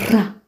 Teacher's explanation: Kimadede utamkwa ncha ya ulimi ikipiga kwenye ufizi, huku hewa ikizidi kupita kiasi na kusababisha mridimo wa ulimi. Sauti hii ni ra.